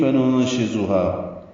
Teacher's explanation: ننشزها نون ساکن پہ اخفا ہے، شین آنے کی وجہ سے زا کو تیز صفیر کی آواز سے نکالیں گے